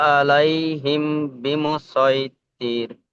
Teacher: মিম সাকিনের পরে বা আসলে একফায়ে সাফাবি, গুণনা করে পড়তে হবে।